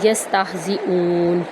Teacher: یہ گول ہا ہے تو اس کی آواز سینے کی جانب سے نکلے گی، نہ کہ وسط حلق سے